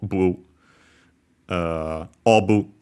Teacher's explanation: Japanese didn't have the v sound at the time, of course, so it becomes the closest one, which is b. And then, of course, they have to add a vowel because consonants can stay on their own, except for n, n.